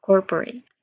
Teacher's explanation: Your mouth starts slightly opening for the short e and you finish with clear t sound.